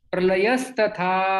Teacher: ये विसर्ग सकार में परिवर्तित हो जाता है